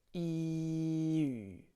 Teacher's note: just an e sound with an ooh mouth